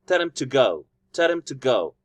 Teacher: when I'm saying the weak form, I'm not emphasizing him and I'm not emphasizing to. I'm emphasizing tell, go, the verbs.